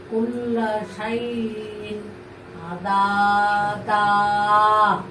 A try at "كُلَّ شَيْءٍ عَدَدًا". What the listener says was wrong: তোমার দুধের মধ্যে মাদ হয়ে যাচ্ছে। কুল্লা শাইইন আদা দা। এই দাটা একটু জাস্ট টাচ করে যাবো। কুল্লা শাইইন আদা দা।